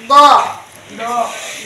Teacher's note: tepi lidah menempel ke gigi geraham atas